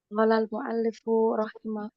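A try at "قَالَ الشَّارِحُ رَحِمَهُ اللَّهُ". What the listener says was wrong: Qala syari rahimahullah ta'ala. Syari ya, bukan mu'alif ya. Kalau mu'alif syarinya ya. Asyari.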